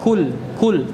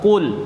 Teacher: Sifat isti'la ini irtifa'u aqsal lisan, terangkatnya pangkal lidah, maka dia tebal.